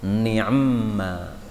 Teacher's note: Ainnya itu asalnya disukun. Ketika disambung, maka mim ketemu mim jadi idgham.